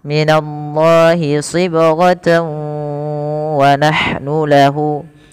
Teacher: Bila kita lanjut, teman-teman, kalau kita lanjut misalkan minallahi sibghatan wa nahnu lahu, wa-nya ya tanwin bertemu waw, maka dinamakan dengan idgham bi gunnah. Cara membacanya, masukkan tanwin ini kepada huruf waw.